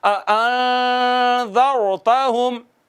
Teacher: نون پر اخفا کریں گے اور ایک الف کے برابر آواز کو چھپائیں گے